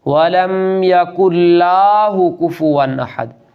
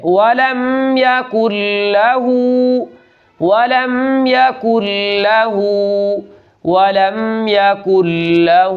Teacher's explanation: یہاں لام کو کھینچنا نہیں ہے بلکہ صرف آدھے الف کے برابر اس کو لمبا کر کے پڑھنا ہے